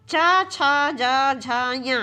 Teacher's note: तो चा जो है ये तालव्य ध्वनि है।